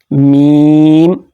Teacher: میم ہمارے ہونٹوں کے خشک حصے جب آپس میں ملتے ہیں دونوں، اوپر اور نیچے والا، تو اس سے میم ادا ہوتی ہے